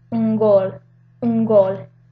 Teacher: the N also takes the point of articulation of that G